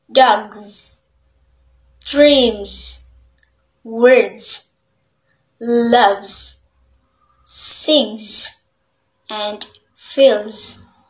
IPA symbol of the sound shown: z